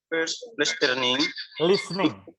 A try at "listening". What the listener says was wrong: Listening. Huruf T-nya nggak dibaca.